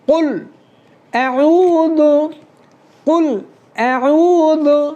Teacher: ذال کو زبان کا سرا اوپر کے دانتوں کا سرا۔